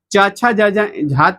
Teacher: च छ ज ज झा तक तालू से बोलेंगे